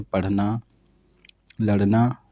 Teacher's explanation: सभी को पता होगा, ये मूर्धन्य उत्क्षिप्त ध्वनियाँ।